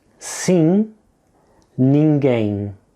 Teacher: A common mistake is for learners to overpronounce the M at the end. When a word ends in M and is preceded by an I or an E, the sound you're aiming at here is a very nasal sound.